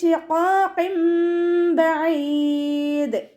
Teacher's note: ഖാഫ് ഇസ്തിഅലാൻ്റെ ലെറ്ററാണ്, ഉയർത്തിയിട്ട് ഉച്ചരിക്കുക കേട്ടോ.